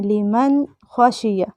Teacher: ہم لمن ناک میں نہیں آواز لے کر جا رہے بلکہ نون کی آواز کو ظاہر کر کے پڑھ رہے ہیں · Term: اظہار